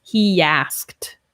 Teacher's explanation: with he asked we link with the yeah sound he asked so it's almost like we have a y in there a yes sound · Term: Y sound